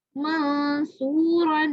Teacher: سو کو میں نے کیوں لمبا کیا, کیونکہ اس کے ساتھ کیا ہے, واو مدہ ہے